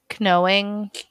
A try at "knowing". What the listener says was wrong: I don't know why you had to pronounce the K. Just knowing.